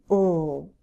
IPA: l